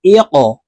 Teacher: قاف কলকলার হরফ, উপরের দিকে ধাবিত করে ধাক্কা দিয়ে উচ্চারণ করতে হবে